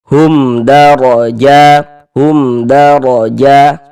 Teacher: Maka berarti karena sebelah sininya bukan huruf ba, bukan huruf mim, berarti ini hukumnya izhar syafawi. Cara membaca izhar syafawi dibaca jelas bunyi mim sukunnya. Kemudian dia tidak didengungkan maka dibaca pendek saja. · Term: idhar syafawi